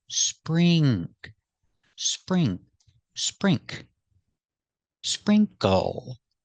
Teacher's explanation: The NK makes two sounds. It makes the sound like ring and sing, plus the K sound.